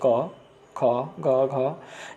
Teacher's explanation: जिसको बोलने में जो जीभ है तालु में स्पर्श करती है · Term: स्पर्श व्यंजन